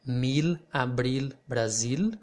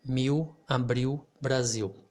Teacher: when i have no vowel after it i don't pronounce the l i will pronounce something similar to the to the letter w in cow · I will pronounce something similar to the letter W in cow, or for example, vowel, when you have the letter W in vowel, or in cow, or in how. So the L sound here will sound similar to the W